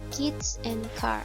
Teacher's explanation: The velar sound is made by placing the back of tongue against the velum. The velum is the soft part beyond the hard palate.